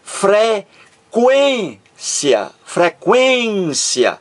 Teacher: a mais forte aqui é a sílaba do meio aqui está o assento Tônico e aqui está o assento gráfico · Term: acento Tônico, acento tônico